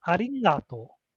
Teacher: The G, the ga dakuon has a nasal sound. So it's like arigato.